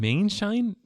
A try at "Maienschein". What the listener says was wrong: I think you forgot a couple syllables there. It's Maienschein. Maienschein. There's a few more vowels. in there.